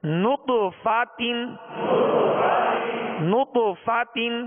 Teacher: طا پر قلقلہ کریں گے اور طا کو پر پڑھیں گے، نطفہ، تا دو زیر تین، نطفۃ نطفۃ۔ جب نط کہیں گے تو ہونٹوں کو گول کریں گے کیونکہ نون پر پیش ہے، فا کی زبر پڑھتے ہوئے آواز اور منہ کھولیں گے، تا کی دو زیر پڑھتے ہوئے آواز کو گرائیں گے، نطفۃ نطفۃ۔